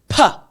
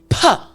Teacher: top and bottom lip coming together. And then you're pushing air out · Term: P sound